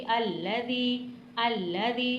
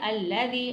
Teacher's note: ज़बर को नहीं खींचना, ज़ेर को थोड़ा सा खींच के, क्योंकि याई मद्दा बन रहा है